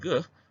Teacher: Bunyi keh dan geh berlaku dalam daerah lelangit lembut